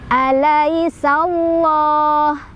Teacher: Alai di sana ada harf lin atau huruf lin, karena ada ya sukun sebelumnya fathah. Dibacanya dilunakan atau dilembutkan. · Lafaz Allah dibaca secara tafkhim ya, karena lafaz Allahnya atau lam jalalahnya didahului oleh huruf yang berbaris fathah, yaitu di huruf sin.